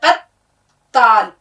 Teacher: تشدید کا مطلب یہ ہوتا ہے کہ ہمیں یہاں 2 بار آواز نکالنی ہے تے کی